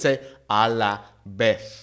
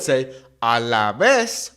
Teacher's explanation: In Mexico, for example, the Z and the C will make a S sound, that kind of snake sound. Whereas in Spain, we'll have the th sound.